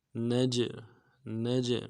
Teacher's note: جیم کے اوپر جب جزم ہو تو قلقلہ ہوگا، قلقلہ کریں گے